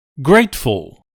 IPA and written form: ˈɡreɪtfəl (grateful)